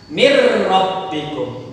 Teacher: Nunnya tidak terdengar lagi. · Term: idgham bila gunnah